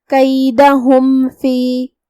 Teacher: دھیان رہے یہاں حکم ہے اظہار شفوی، ہم میم کو ظاہر کریں گے اور بغیر غنہ کے حکم کو ادا کریں گے